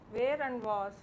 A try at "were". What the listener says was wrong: It's not where, it's were, W-E-R-E.